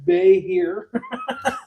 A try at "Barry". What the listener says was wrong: Barry, I think it's Barry. Goes to Barry. Goes to Barry. That H is silent. That H is silent, yo.